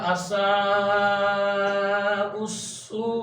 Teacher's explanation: گے، تینوں جو علامتیں ہیں اس کو ہم نہیں پڑھیں گے، حمزہ کو ڈائریکٹ ہی سین کے ساتھ اٹیچ کر دیں گے